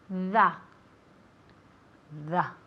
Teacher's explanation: You have to put your tongue between your teeth. Tienes que poner la lengua entre los dientes y dejar aire salir.